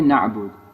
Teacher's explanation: It has an Ayn after the A, but there's no vowel after the A.